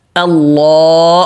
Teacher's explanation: اللہ کے نام سے پہلے زبر آ رہا ہے تو لام موٹا